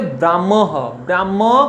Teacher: 5 নম্বর সূত্র দেখো, মফলা যদি হয়ের সঙ্গে যুক্ত থাকে, মফলা যদি হয়ের সঙ্গে যুক্ত থাকে তখন কি হয়, তখন ম আগে উচ্চারিত হয়